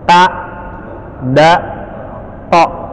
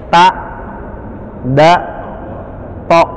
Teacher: Ujung lidah yang bertemu dengan gigi seri atas